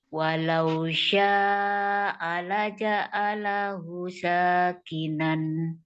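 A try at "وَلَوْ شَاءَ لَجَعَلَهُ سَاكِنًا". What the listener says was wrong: Hu-nya panjang 2 harokat.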